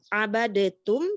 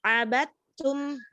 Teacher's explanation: Karena huruf dal dan ta ada lidah dalam satu mikrot, yaitu ujung lidah bertemu dengan tempat tumbuhnya gigi seri atau akar gigi, ya. Lalu cara membacanya idgham. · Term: idgham mutajanisain